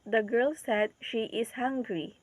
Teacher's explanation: the sustained juncture here is after the word said separating the reporting Clause from the reported speech and emphasizing the source of information